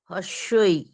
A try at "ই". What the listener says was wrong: না, হ্রস্বই নয়, উচ্চারণ কখনোই হ্রস্বই নয়, উচ্চারণ হচ্ছে ই। আমরা ওকে নাম দিই হ্রস্বই, কারণ এটা হ্রস্ব ইকার, এই জন্য হ্রস্বই বলি। এটা দীর্ঘ ইকার, ওই জন্য একে আমরা দীর্ঘই বলি। অ্যাকচুয়ালি এটা হচ্ছে নাম আর কিচ্ছু না, কিন্তু উচ্চারণ হবে ই আর ই।